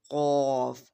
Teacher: زبان کا پچھلا حصہ نرم تالو منہ کے پچھلے اوپر والے حصے کو چھوتا ہے۔ یہ ایک گہری اور مضبوط آواز ہے، اس کو پر پڑھا جاتا ہے۔